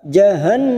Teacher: nun yang bertasdid gunna musaddadah kita tekan selama 3 harokat